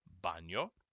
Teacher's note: right b and v b and v are pretty much identical in sound it's a very soft and small sound